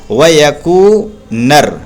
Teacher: اور زبر کے بعد الف نہیں ہے وا پر، تو اس لیے زبر کو نہیں کھینچیں گے، جلدی پڑھیں گے وَيَكُو، وا یکو نہیں، وَيَكُو۔ اور پیش کے بعد واو آ رہا ہے تو اس لیے اس پیش کو کھینچیں گے، پڑھیں گے وَيَكُونَر، نون را زبر نر، وَيَكُونَر، ٹھیک ہے۔